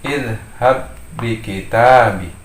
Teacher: Adalah diidghamkan, artinya memasukkan huruf ba yang pertama ke dalam huruf ba yang kedua seolah-olah menjadi tasydid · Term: idgham mutamatsilain